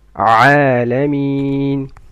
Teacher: عين comes from mid of the throat